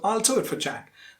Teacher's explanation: Jack is a noun there, and you have to stress it.